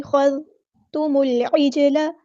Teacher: میم کو ہم نے لام کے ساتھ ملا دینا ہے، حمزۃ الوصل ہمارا ڈراپ ہو جائے گا